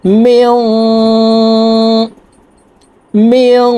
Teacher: নাকের ভিতর থেকে গুন্না করতে হবে